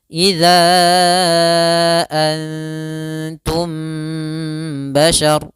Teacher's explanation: Itu taknya, nunnya disamarkan ke huruf ta, bukan antum tapi antum. Antum langsung disamarkan ke huruf ta. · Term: ikhfa